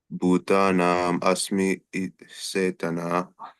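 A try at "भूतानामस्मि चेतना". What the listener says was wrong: Bhutanamasmi Chaitana. You should be careful. The C's are not always H's as in English, unless there is a special scenario where it mentions with a dot or something. It's always Cha.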